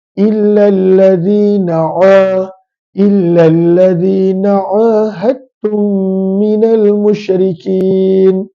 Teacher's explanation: Maka makhraj huruf ain adalah daripada pertengahan kerongkong, daripada pertengahan halqum.